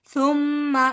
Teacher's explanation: ثم میم مشدد ہے یہاں پر غنہ کیا جائے گا